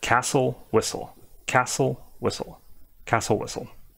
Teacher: you don't need to be doing the T sound at all